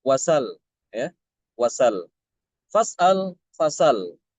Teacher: Jadi hamzahnya dia dibuang ya untuk Imam Alfisi hamzahnya itu dibuang tapi harakatnya harakat hamzah itu dipindah ke huruf sebelumnya yaitu sin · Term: naqal